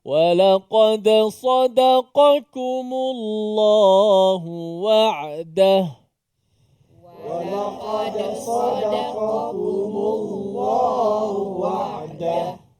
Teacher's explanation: ada huruf tebal sa, di tengahnya nipis da. Kemudian kembali tebal qa. Kemudian qaf itu ada kaf bagi depan pula, dekat-dekat dengan qaf.